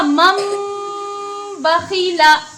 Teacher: نون کو میم سے بدل دیا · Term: اقلاب